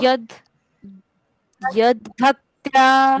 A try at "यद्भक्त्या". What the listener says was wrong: भक्त्या, यहाँ पे य के बाद आधा द पढ़ना है पहले, और फिर भक्त्या। यद भक्त्या